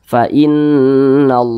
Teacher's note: Ketika kita berjumpa kalimat Allah, kemudian huruf di belakang kalimat Allah dia berbaris ke atas atau berbaris dhammah, berbaris fathah atau berbaris dhammah, maka kalimat Allah ini dibaca tebal atau dibaca tabkhim.